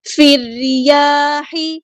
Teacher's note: حمزۃ الوصل ہمارا ڈراپ ہو جائے گا. لام یہاں پہ لام شمسیہ ہے، اس کو ہم نہیں پڑھیں گے